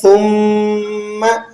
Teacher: نون میم مشدد ہمیشہ غنہ ہوتے ہیں، ٹھیک ہے، تو آپ نے یہاں پر غنہ بھی ادا کرنا ہے اور اسے ذرا مضبوطی سے بھی پڑھیں گے۔